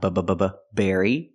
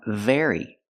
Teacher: it's very important hey Berry very they almost sound the same the B makes a close sound bbbb Berry and the V makes a vibration sound very